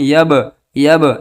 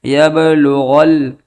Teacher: یہ با ساکن ہے اور با حروف قلقلہ میں سے ہے، لہٰذا اس با کے اندر قلقلہ کریں گے